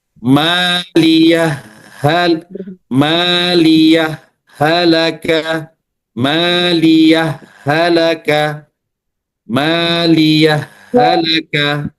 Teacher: Nah, cara membaca izhar membaca sukun huruf ha dengan berhenti sejenak tanpa nafas. Saktah latifah namanya saktah latifah.